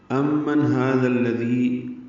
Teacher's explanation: امن میم مشدد پہ غنہ ہے اور نون ساکن پہ اظہار ہے، کیونکہ آگے ہا آ رہا ہے حروف اظہار میں سے۔